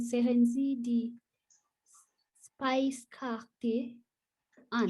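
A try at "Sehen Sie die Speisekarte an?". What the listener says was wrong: Speise. It's not spice. Speise. Speise.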